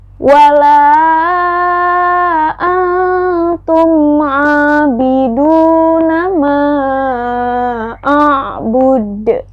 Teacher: Nun sukun bertemu dengan huruf ta, maka dibacanya dengung dan hukumnya ikhfa.